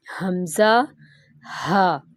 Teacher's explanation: جو اقص حلق ہے وہاں سے حمزہ اور ہا ادا ہوتا ہے، حمزہ ہا۔ اور وسط حلق درمیان کا حصہ، یہاں سے عین اور ہا ادا ہوتا ہے، عین ہا۔